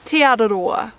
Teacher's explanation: putting the tongue to the roof of your mouth and then just flicking it down a little bit as you say the R